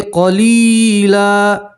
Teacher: دو زبر کی تنوین کے اوپر وقف کریں گے تو دو زبر کی تنوین کو ایک زبر اور الف سے پڑھیں گے تو پڑھیں گے قلیلا.